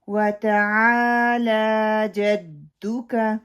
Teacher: اب یہاں پہ ہو کیا رہا ہے، عین کو 2 کاؤنٹ کرنا ہے کیونکہ زبر کے بعد خالی الف آ رہی ہے، لام کے اوپر کھڑی زبر آ رہی ہے تو اس کو 2 کی گنتی تک لمبا کرنا ہے